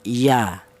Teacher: Jadi keluarnya huruf ya berasal di tengah lidah.